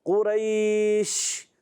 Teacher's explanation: قاف کو پر پڑھیں گے، قاف حروف مستعلیہ میں سے، یا ساکن سے پہلے زبر آنے کی وجہ سے یا لین ہوگا، نرمی کے ساتھ ادا کریں گے، اور شین جب وقف کریں گے شین کا مخرج ہوتا ہے زمان کا درمیان، اوپر تالو کا درمیان، اور اس میں ایک صفت ادا ہوتی ہے جس کو کہتے ہیں تفشی، منہ میں آواز کا پھیلنا۔ تو آپ کو آواز آئی ہوگی قریش، تو یہ جو آواز آئی یہ تفشی، منہ میں آواز کا پھیلنا، ٹھیک ہے، تو اس کو آپ نے اچھے انداز سے ادا کرنا ہے۔